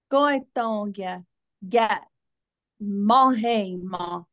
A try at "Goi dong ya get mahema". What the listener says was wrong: There it is. Was that better, guys?